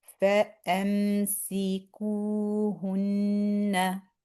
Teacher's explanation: We do hunna on the noon. We stress there for 2 counts because of the noon having the shadda.